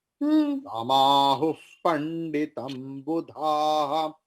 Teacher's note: Here, after who, you are seeing visarga. So visarga is following pa. So visarga's pronunciation will be transformed into fakara, which is called upadhamana